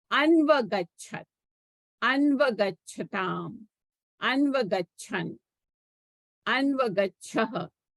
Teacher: There will be a sandhi here because anu plus a, so there will be a yan sandhi here. So anu plus a, this u becomes a v, right? And na, so anu plus a becomes anva.